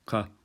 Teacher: Kof is the K. It sounds like a K, but it's towards the back of the mouth. So it's the tongue goes backwards instead of forwards